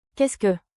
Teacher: Finish with a soft rising tone.